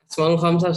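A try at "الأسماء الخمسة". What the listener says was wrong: Al-Asma'ul Khamsah. Al-Asma'ul Khamsah. Nyebutnya juga kalau bisa yang betul ya. Bukan Asma'ul Khamsah, tapi Al-Asma'ul Khamsah.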